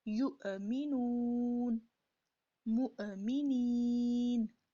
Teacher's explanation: کسی بھی صورت میں حمزہ کی آواز حلق سے ہی نکلے گی